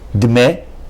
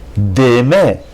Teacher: each shva must be pronounced with a short slurred sound. So here each shva in this exercise will be longer.